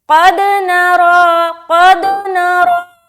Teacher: را کو موٹا بھی ادا کرنا ہے۔ دوسری چیز کہ را کو 1 الف کے برابر لمبا بھی کرنا ہے، کیونکہ اس کے اوپر کھڑا زبر آ گیا۔